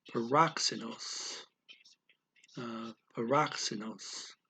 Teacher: we have that x in there that's a ks sound the k goes to the syllable before and the s goes after